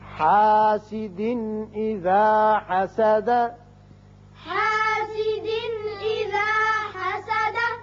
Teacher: حاسد یہاں دو زیر تنوین ہے, نون کی آواز پیدا ہوتی ہے, آگے حمزہ بشکل الف ہے جو کہ حروف حلقی میں سے ہے, لہذا یہاں اظہار ہوگا نون کا.